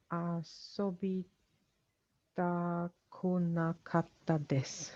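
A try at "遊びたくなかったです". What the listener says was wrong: Perfect. Good. Asobitakunakatta desu. Good. Excellent. Well done.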